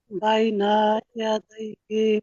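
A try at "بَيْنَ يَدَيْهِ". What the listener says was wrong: বাইনার টান নেই তো, বাইনা ইয়াদাইহি। এটা তো ভুল হচ্ছে, বাইনার টান হবে, বাইনা ইয়াদাইহি। বাইনা, তার টান হচ্ছে তো, বাইনা বলছে,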